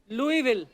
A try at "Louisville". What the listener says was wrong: लुइस जब लिखा है तो स क्यों नहीं बोल रहे?